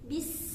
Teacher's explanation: Sin ini memiliki sifat sofir, ya. Jadi dialirkan, dan juga memiliki sifat alhams dan rokhwa. Bis. Nah, dialirkan sifatnya.